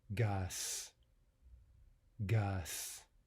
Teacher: the sound Z, which may be devoiced to an S.